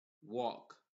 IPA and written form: wɔːk (Walk)